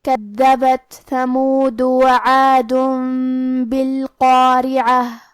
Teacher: کلمت کذبت میں حرف الدال کی ادائیگی زبان کے سر اور اوپر والے دانتوں کے اندرونی کناروں سے ہے. کیونکہ دال پہ تشدید ہے لہذا ہم یہ حرف کو 2 حرف کے برابر پڑھیں گے.